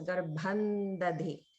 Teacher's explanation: you can pronounce that as garbhandadhi, because it's followed by the di or da. It becomes pronounced as a na sound.